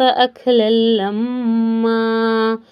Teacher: میم پر اچھے سے غنہ کریں کیونکہ یہاں تجدید ہے